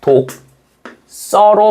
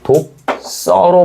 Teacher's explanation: 파열음 뒤에 경음화가 오기 때문에 얘는 독서로 발음한다